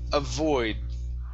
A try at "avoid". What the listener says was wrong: Okay, now pronounce that D instead of avoid. Okay, your tongue needs to come up to the top of your mouth so you can pronounce the sound.